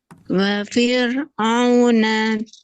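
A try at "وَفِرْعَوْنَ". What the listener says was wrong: Huruf ro jangan ada hamesnya ya. Wa fir. Tapi ro-nya takrir saja. Wa fir'auna.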